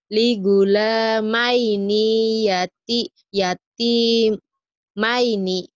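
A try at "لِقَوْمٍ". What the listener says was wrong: Enggak ada yang panjang. Ligula lanya doang ya.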